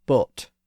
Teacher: the O sound that was used in early modern English was more of a pure vowel sound, so it was more like A word like boat was pronounced boat.